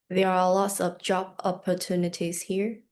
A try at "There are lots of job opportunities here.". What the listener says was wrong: There was a very subtle but resounding hesitation. Do it again.